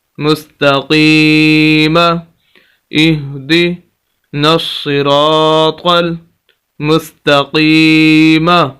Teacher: تو یہاں پر الف مدہ بھی اس کو بھی لمبا کرنا ہے، اور یہاں پر یا مدہ ہے تو قاف کو ہم لمبا کریں گے